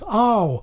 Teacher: This brings us to the mouth vowel, where things are a bit more variable. In old RP, it started in the lower right quadrant and glided into the upper right quadrant, ow, and there was a variant with practically no lip rounding. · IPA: [ɑw]